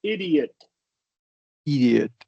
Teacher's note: It's just for the O, just do a schwa